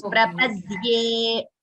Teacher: There is no dha. It is Prapadye. There is no Mahaprana there.